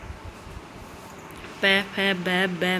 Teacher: प फ ब ब में ये होठ आपस में मिल रहे हैं, इसलिए ओष्ठ्यमी आते हैं।